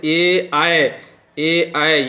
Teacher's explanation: उसी तरह से ए, आय, ए, आय, ये जो वर्ण है, इनकी जो ध्वनि निकलती है कंठ तालु, यानी कंठ और तालु दोनों के सहयोग से ये ध्वनियाँ निकलती हैं